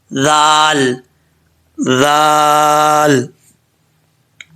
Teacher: ذال کے اندر سیٹی نہیں ہوتی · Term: بغیر سیٹی